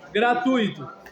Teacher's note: Tem gente que fala gratuito, aí seria iatado, mas a pronúncia é gratuito. Então é um ditongo. Exatamente. Com uma vogal que é U e uma semivogal.